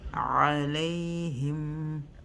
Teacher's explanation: We have a mim sukun. Hold it for 1 second again.